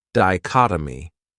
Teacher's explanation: This word has four syllables and the stress is on that second syllable · That third syllable has that schwa, that uh sound.